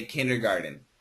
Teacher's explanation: the pronunciation in America is usually with a D · But the American pronunciation, because of the flat T, people think it's a D. So they say kindergarten.